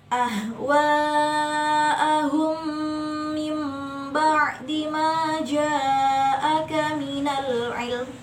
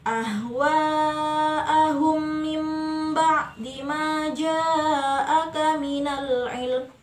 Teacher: dengungnya selama satu setengah Alif atau tiga harokat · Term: Idgham Mimi